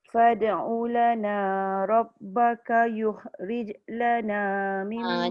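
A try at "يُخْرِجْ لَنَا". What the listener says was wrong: Jangan bagi dia ketat sangat. Yukhrij lana. Sambung je terus. Rijlana.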